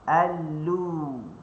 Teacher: Okey, huruf lam tadi, okey, hujung tepi lidah kita letakkan di gusi atas. Hujung tepi lidah ni kita letakkan di gusi atas dalam keadaan tawassut, dalam keadaan sederhana.